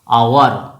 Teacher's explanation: দেখো এইচটা সাইলেন্ট আছে, আওয়ার, আ উচ্চারণ হচ্ছে প্রথমে